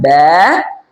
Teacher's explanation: বা হচ্ছে দুই ঠোটের ভিজা অংশ থেকে